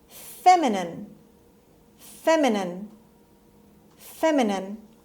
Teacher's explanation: stress is on the first syllable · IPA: /ˈfemɪnɪn/